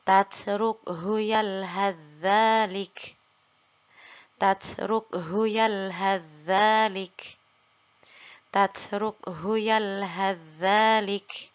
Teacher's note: Nah, zal juga bisa kita tambahkan atau dalam beberapa mushaf ditambahkan tasydid. Maka kita leburkan huruf sa-nya lalu kita langsung baca pada huruf zal